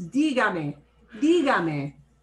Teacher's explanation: Normally we stress second to the last syllable, but the way I pronounce this word is dígame.